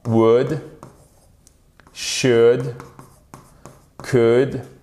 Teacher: Vous ne prononcez jamais le L dans should, would, could.